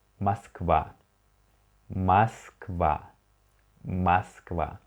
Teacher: You can see that O unstressed, so we read it like A.